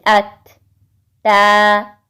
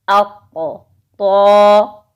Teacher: اس کے بعد ہے تا اور طا، ٹھیک ہے، تا باریک ہے اور طا موٹا حرف ہے، جیسے ات، تا، اق، طا، یہ کیا ہوا، موٹا حرف ہو گیا۔